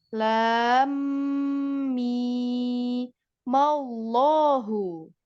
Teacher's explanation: Jadi yang panjang itu mi-nya. Tapi idghamnya tetap idgham, jangan dilewat.